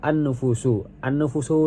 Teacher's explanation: An-nufusu sendiri situ dibaca idgham syamsiah karena lamnya diidghamkan ke huruf nun